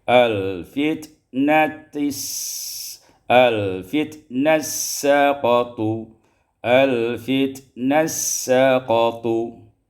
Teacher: al-fitnati saqatu, idgham ta fi sin, diidghamkan ta pada sin menjadi al-fitnas saqatu, al-fitnas saqatu.